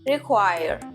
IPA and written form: rɪˈkwaɪr (require)